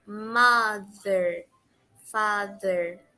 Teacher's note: caso tem basicamente um som suave da letra Z mother Father para ter esse som Vocês precisam colocar a língua entre os dois dentes superiores da frente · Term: pronúncia do th